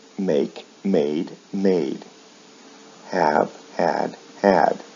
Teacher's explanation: With verbs like make, the vowel sounds remain the same in the past and past participle, but the final consonant sound is changed to a D.